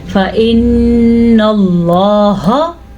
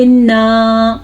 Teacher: نون پہ آپ نے غنہ کرنا ہے، لیکن اس کا یہ مطلب نہیں کہ نون کو آپ لمبا کر دیں. غنہ اور چیز ہوتی ہے اور لمبا کرنا اور چیز ہوتی ہے.